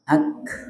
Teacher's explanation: Jadi nafasnya saja bukan bunyi ke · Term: kaf sukun